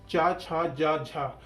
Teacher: चा, छा, जा, झा को स्पर्श संघर्षी व्यंजन कहा जाता है।